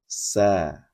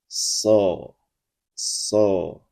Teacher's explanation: jika sh maka dibunyikan dengan mengangkat pangkal lidah ke langit-langit · Ya za ya za sa dan sh dibunyikan dari tempat yang sama yaitu ujung lidah diletakkan di permukaan bagian dalam gigi seri bawah Bedanya jika membunyikan sa posisi lidah rileks, tidak terangkat ke langit-langit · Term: huruf istilla, huruf tipis